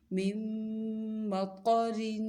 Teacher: را کو باریک پڑھنا ہے کیونکہ را کے نیچے دو زیر ہیں. جب را کے نیچے زیر ہو یا دو زیر ہوں تو پھر را باریک پڑھی جاتی ہے.